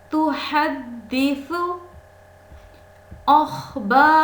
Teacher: تحدث، ہا وسط حلق سے